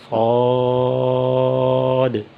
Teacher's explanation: صاد کی ادائیگی کی جگہ وہ زبان کی نوک ہے اور اوپر نیچے کے دونوں دانت ہیں جسے صاد ادا ہوگا صاد، زبان کی نوک اور اوپر نیچے کے دونوں دانت جہاں سے صاد ادا ہوگا صاد۔ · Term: صاد کا مخرج